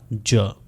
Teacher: इसके बाद एफ्रिकेट साउंड्स हैं जो प्लोजिव भी हैं और फ्रिकेटिव भी हैं, यानी ट की तरह का स्टॉप होगा और श की तरह फ्रिक्शन होगी, तो ये साउंड बनेगा च और ये वॉइसलेस है। उसके बाद ड की तरह स्टॉप होगा और य की तरह फ्रिक्शन होगी और ये साउंड बनेगा ज, जो कि वॉइस्ड है।